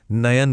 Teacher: बीच में ए की आवाज गूंजती है